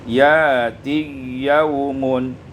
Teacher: Kemudian pada ayat yang ke-47, ya'tiya yaumun, ibdalul hamzati alifan, ditukarkan hamzah dengan alif, summa idghamul ya fil ya, kemudian diidghamkan ya pada ya menjadi ya'tiyaumun.